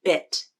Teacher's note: the lips are neutral the tongue is forward and the middle part of the tongue is arched up towards the roof of the mouth the tongue tip is down behind the bottom front teeth one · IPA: /ɪ/